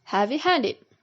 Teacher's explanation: compound with an adjective and a past participle ed word has the primary stress on the second word and secondary stress on the first word